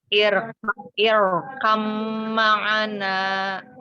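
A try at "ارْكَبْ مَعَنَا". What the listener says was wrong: Ro-nya hamzah wasalnya jangan terikut tebal, tipiskan dulu. Ro-nya yang ro sukun yang tebal. Kam ma'ana.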